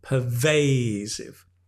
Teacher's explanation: notice the stress again is on the middle syllable